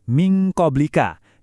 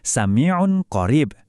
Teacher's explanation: Suara N yang disamarkan itu bakal melebur jadi dengungan tebal yang bunyinya malah sering kedengaran kayak bunyi ng. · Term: ikhfa ab'ad